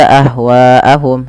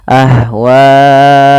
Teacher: hamzahnya pada pasatu kata maka dinamakan dengan mad wajib muttasil maka harus panjang WAnya empat harakat atau lima tidak boleh dua